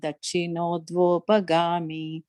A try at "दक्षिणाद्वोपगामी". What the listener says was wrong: Second line, Dakshinad Vopagami, not Dakshino. Second time you said Dakshino, it's Dakshinad Vopagami.